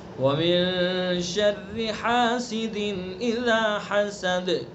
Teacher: ہا کو حلق سے ادا کریں گے، دال کے اندر قلقلہ کریں گے